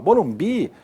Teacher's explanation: a sílaba forte é a última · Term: oxítonas